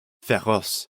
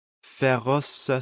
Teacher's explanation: we get a little extra vowel on the end of ferrous